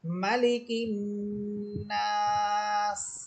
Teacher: এখানেও নুন হরফে গুন্না হবে এবং নাস বলে থামার সময় 3 আলিফ পরিমাণ টেনে পড়তে হবে।